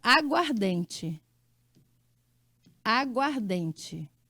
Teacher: olha aí como houve perda de fonema tem um a e outro a e aqui ficou só um ó juntou os dois em um só então houve perda de